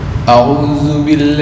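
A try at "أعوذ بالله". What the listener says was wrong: Bukan du, kalau du tercampur dengan dal, ya. Du. Di mana makhraj dal? Nah, karena kembali ke makhraj lagi nih. Dal. Ini gambarannya dal. Ini dal. Fa dal sama. Ujung lidah dengan ujung gigi atas. Du. A'udzu. Du. Gambarnya ini. Ujung lidah dengan ujung gigi atas.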